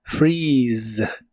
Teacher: se pronuncia con la i larga o doble y termina con el sonido de la z que en inglés es como una s vibrante